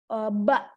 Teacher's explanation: jadi tertahannya suara nggak ngalir suaranya langsung maksa gitu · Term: shiddah